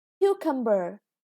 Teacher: The first syllable is stressed